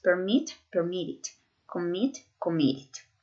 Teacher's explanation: el acento está en la segunda sílaba. Ustedes no dicen permit, no se dicen permit. · el acento está en la última sílaba